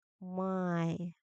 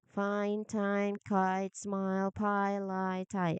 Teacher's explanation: Your mouth is wide open, your tongue is flat, and then you climb the mountain by moving your tongue forward and upward until your jaw is only slightly open.